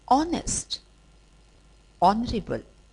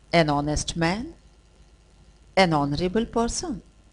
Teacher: h is silent so these words begin with a vowel sound and not a consonant sound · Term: unsounded consonant